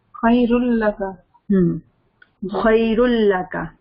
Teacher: ہمیں ادغام کر رہے ہیں لیکن غنہ تو نہیں کرنا